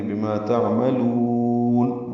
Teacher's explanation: بما میں ما الف مدہ ہے، 2 حرکات لمبا ہے، تعملون عین ساکن پہ اظہار ہے، میم کو جلدی ادا کریں گے، لام کو لمبا کریں گے، بما تعملون، وقفا مد عارض للسکون۔